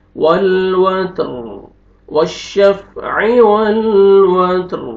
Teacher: تا کو باریک پڑھیں گے اور را کو پر کریں گے کیونکہ را سے پہلے ساکن، ساکن سے پہلے فتح ہے، را کو پر کریں گے۔